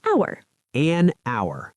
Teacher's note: If you write it, it starts with H, but if you say it, the H is silent. It sounds like hour.